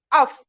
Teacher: ऊपर के दांतों को नीचे के होठ के गीले हिस्से पर टच करने से अदा होगा फा